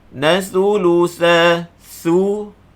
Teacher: Nathulutha thulutha keluar lidah. Jangan baca falahunna sulusa, tu dah tukar sa jadi sin.